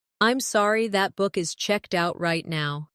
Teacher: Stress checked out to make it clear.